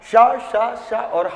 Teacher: शा शा शा और हा में भी घर्षण उत्पन्न होता है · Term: ऊष्म संघर्षी